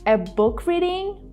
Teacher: instead of saying a book reading again we kind of stop the release of air we don't try to release it fully